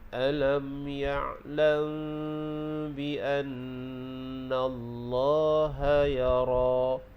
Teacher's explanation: Dan begitu juga mim mati bertemu dengan ba, mim yang tidak ada sukun bertemu dengan ba. Ba adalah huruf ikhfa syafawi, jadi bacaannya kita baca dengung 2 harakat. · Kemudian bila waqaf pada ya ra tu kita baca 2 harakat, dan ra itu dibaca dengan tebal